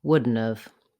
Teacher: Wouldn't have used with another verb becomes wouldn't of. Have gets reduced to v, wouldn't of.